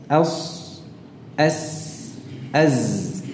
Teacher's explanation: Pada saat kita mengucapkan huruf shad ya, suara itu terdengar tajam ketika suara itu mengalir melalui celah yang sempit ya, atau tempat mengalir yang sempit di antara gigi seri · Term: safir